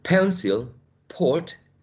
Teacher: Pencil, port, is louder and it's stronger, right? It's more plosive than p in final position.